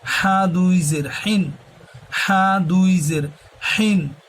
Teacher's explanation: হাটা হবে হলকের মধ্যখান হইতে। হা মোটা করে।